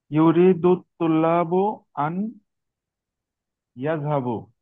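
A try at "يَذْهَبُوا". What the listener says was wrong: ইয়াযহাবু, একটু লম্বা করে বলেন তাহলে।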